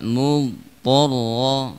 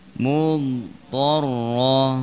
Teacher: istitolah harus kita tampakkan ketika mengucapkan dhad